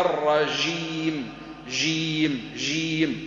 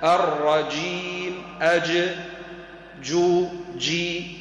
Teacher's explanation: هذه من اللهجات اليوميه وليست الجيم القرانيه